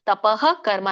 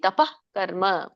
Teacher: ಯಜ್ಞದಾನ ತಪಕರ್ಮ ಇಲ್ಲಿ ನಾಲ್ಕು ಪದಗಳಿದೆ ಯಜ್ಞದಾನ ತಪಕರ್ಮ ತಪಹ ಕರ್ಮ ಹೇಳಬೇಡಿ ತಪಕರ್ಮ ಸ್ವಲ್ಪ ಹ ಉಚ್ಚರಣೆ ಬರಬೇಕು ಪೂರ್ಣ ಅಲ್ಲ